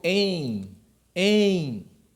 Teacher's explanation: o e está com uma nasalização